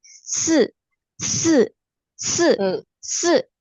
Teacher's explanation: Ingat kalau nada 4 berarti seperti disentak dan di ujungnya seolah-olah ada huruf K